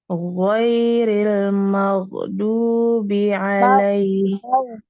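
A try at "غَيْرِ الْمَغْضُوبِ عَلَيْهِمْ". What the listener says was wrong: Maghdubi, jangan mage. Jangan mage. Gitu ya. Ada pantulan, enggak boleh ya. Jadi ngalir.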